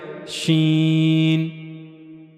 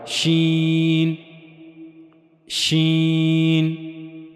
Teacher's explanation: شین کی ادائیگی کے لیے زبان کا درمیانی حصہ اور منہ کا اوپر والا حصہ، شین، یعنی زبان کا درمیانی حصہ منہ کے اوپر والے حصے کی طرف اٹھے گا، لیکن اس سے جا کر ملے گا نہیں، اس سے جا کر ملے گا نہیں، بلکہ زبان کے درمیانی حصے کو منہ کے اوپر والے حصے کی طرف اٹھانا ہے، وہاں سے شین ادا ہوگا، شین، شین۔